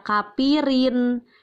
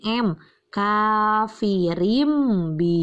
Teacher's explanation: ba Jangan dibaca kafirin tapi harus berubah jadi m-coffee rimbi Hye Kenapa ini di bacanya berubah jadi m karena ada tanwin bertemu dengan huruf ba dan disebut dengan iqlab